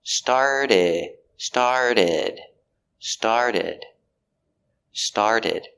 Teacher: we have the t between the r and the vowel so we change to a d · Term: fast d